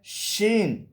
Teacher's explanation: شین، شین کا مخرج ہے وسط زبان اوپر کا تالوں. زبان کو ذرا پیچھے ہٹا کے زبان کا بیچ اوپر کے تالوں کو جب لگے گا، اس سے شین ادا ہوتا ہے · زبان کو ذرا پیچھے ہٹا کے زبان کا بیچ اوپر کے تالوں کو جب لگے گا، اس سے شین ادا ہوتا ہے. شین میں صفت تفشی بھی پائی جاتی ہے. تفشی سے مراد بیٹا یعنی کہ منہ کے اندر آواز پھیل جاتی ہے.